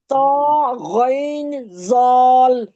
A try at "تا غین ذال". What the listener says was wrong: تا غین ذال، موٹا نہ کریں نا ہر ایک حرف کو.